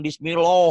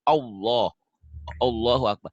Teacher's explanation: Bismillah tuh tipis, jangan Bismillah. Kalau tebal kan ada seperti ada O-nya.